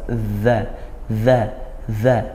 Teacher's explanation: Ujung lidah bertemu ujung gigi atas. Dza. Dza dza.